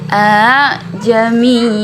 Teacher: huruf hamzah yang di tengahnya itu sudah tidak dibaca lagi. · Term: tashil